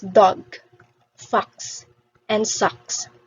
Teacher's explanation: It is directly said, it is quick and soft, and you don't open your mouth too much, unlike for the long O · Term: short O